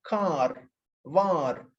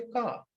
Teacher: if you pronounce this r before the consonants and then end of the word then this is a characteristic feature of the american english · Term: rhodic